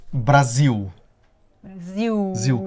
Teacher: mas precisamente a semivogal u, ou seja, um u fraco, né?